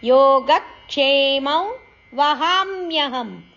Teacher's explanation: ಹ ದೀರ್ಘ ಅಕ್ಷರ ಹ ಅಕ್ಷರದ ಮೇಲೆ ಆಘಾತ ಇದೆ